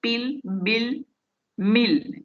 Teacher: તો એ રીતે એ જે ઇંગ્લિશ શબ્દો છે 3, પીલ, બિલ અને મિલ, એ જ્યારે આપણે બોલીએ with the lips tightly શટ, તો આ એ બોલતી વખતે આપણા બંને લિપ્સ એકબીજા સાથે ટાઇટલી શટ થાય છે, બહુ મક્કમતાથી એ બંધ થઈ જાય છે